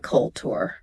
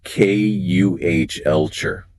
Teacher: It is not culture. The emphasis is on the first syllable, and the tu makes a chart sound.